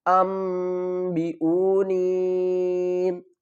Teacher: اس نون کی آواز کو میم کی آواز میں بدل کر پڑھیں گے